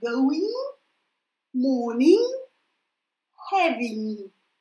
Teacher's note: Лучше делайте ум в конце, да, чуть-чуть в нос